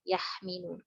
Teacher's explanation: Kemudian makhrajnya juga jauh sekali tenggorokan dengan bibir. Contohnya yahmilun, ha dengan mim, yahmilun.